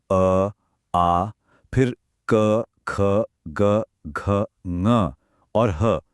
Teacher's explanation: Feel हुआ? सारी की सारी वाइब्रेशन गले के बिल्कुल पिछले हिस्से में हो रही है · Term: कंठ